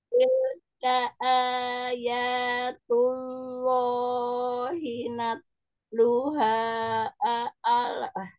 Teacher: Kemudian lam sukunya jangan mantul